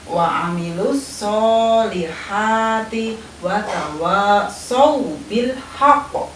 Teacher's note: Contohnya adalah ketika kita mengucapkan wa amilus solihati wa tawassaw bil haqq, ya. Jadi ketika kita mengucapkan huruf so, ada desis yang keluar di antara dua bibir